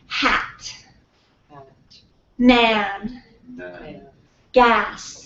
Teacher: can you feel how low your tongue is in your mouth ah ah you really need to open your mouth